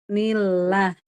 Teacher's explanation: Nah, lafaz Allah kalau sebelumnya kasroh bunyinya lah ya. Nah, ini ni-nya kan kasroh harokatnya. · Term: lah tipis